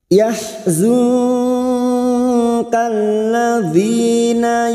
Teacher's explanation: Lula yahzu ha yahzu kalladzi, nun sukun bertemu kaf, ikfa hakiki. Kita samarkan bunyi nun sukun dan mendengung selama 2 atau 3 harokat.